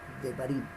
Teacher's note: pero hay que tener en cuenta que esta pronunciación lleva un dagesh, y por llevar dagesh, esta primera sílaba es acentuada. Si no llevara esa primera sílaba, en esa primera letra, el dagesh, no sería acentuada.